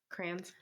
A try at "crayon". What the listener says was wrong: Crayons. Crayon. You know, you said crayon. It's like you're saying a one syllable word. No, crayon. Yeah, it's crayon.